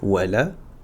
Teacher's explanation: supprimer le alif, la hamz liaison et le lem dans la prononciation. Donc on va faire wala et on va aller directement sur le dad.